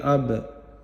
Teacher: اب یہاں با پر با ساکن پر قلقلہ کریں گے، اب ایسے پڑھیں گے